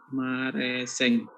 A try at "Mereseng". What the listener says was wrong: Mereseng Pak, bukan Mareseng. Mereseng pakai E Pak.